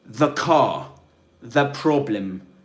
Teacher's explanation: THE in English is pronounced with a schwa, like this, the, when it's immediately followed by another consonant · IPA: /ðə/